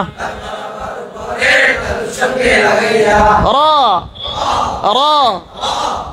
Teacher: ঠোঁটের কোনো কথা নাই এখানে ঠোঁট গোল হবে না হরফ মোটা হবে